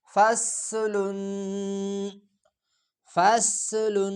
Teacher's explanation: صاد سٹی کی آواز کو موٹا کر کے پڑھا جاتا ہے۔ ف صاد زبر فس، لام دو پیش لن، فصل فصل، ف صاد زبر فس، لام دو پیش لن، فصل فصل۔